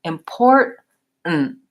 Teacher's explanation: it doesn't sound like import with an it release of air it goes up to T import and then it releases right in to the N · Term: stopping this T